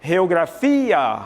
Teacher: no espanhol eu digo geografia a tônica é fia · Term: sílaba tônica